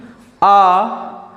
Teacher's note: इसके उच्चारण करने पर मुख सबसे अधिक खुलता है। जैसे कि आ का अगर उच्चारण करेंगे तो मुख का उपयोग सबसे ज़्यादा खुलेगा। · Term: विवर्त स्वर